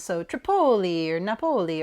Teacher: the second syllable is what you emphasize